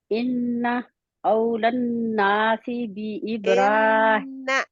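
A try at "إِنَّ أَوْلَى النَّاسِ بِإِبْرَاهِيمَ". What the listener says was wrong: इन्ना पे और टाइम दे।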